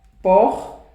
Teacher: O por não é mais forte? É mais forte, é a minha sílaba tônica.